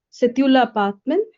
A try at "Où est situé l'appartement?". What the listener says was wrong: No, no, no, dear. E is with an accent. So, situé. Où est situé l'appartement? L'appartement.